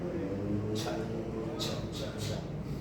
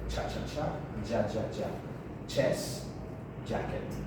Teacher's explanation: It's a mixture of a plosive sound and a fricative sound. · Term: affricate sounds